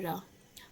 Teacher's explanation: जो जीभ की नोक वायु से रगड़ के कांपती है तो उसको हम लुंठित व्यंजन बोलते हैं